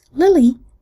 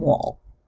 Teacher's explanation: its dark L allophone is produced